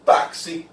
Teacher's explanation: X, com som de K mais S.